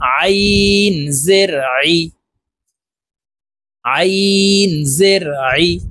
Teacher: হলকের মধ্যখান থেকে চাপ দিয়ে এই আইন হরফের উচ্চারণ করব।